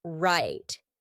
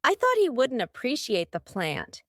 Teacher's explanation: when I said that final T my tongue was stopped at the top of my mouth that's why we call it a stopped T right right let's